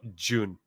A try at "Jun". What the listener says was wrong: Jun. Not an O-O. Not an O-O sound. There's still an instead of an It's an